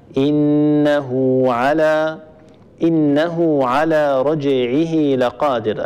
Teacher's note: فاننا نصلها بواو اللفظيه يعني تكون في اللفظ فقط ولكنها لا تكتب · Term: مد الصله